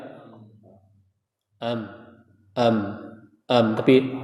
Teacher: harus benar-benar terasa di rongga hidung